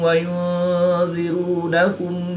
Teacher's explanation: نون ساکن کے بعد ذال حروف اخفا میں سے ہے تو یہاں پر اخفا ہوگا یعنی غنہ زمانی کر کے پڑھیں گے۔ واو ساکن سے پہلے را پر پیش ہے تو واو مدہ کو ایک الف یعنی 2 حرکات کے برابر کھینچ کر پڑھیں گے۔